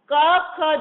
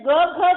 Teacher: ક ખ જે છે એ કઠોર કહેવાય ગ અને ઘ એ શું છે મૃદુ કહેવાય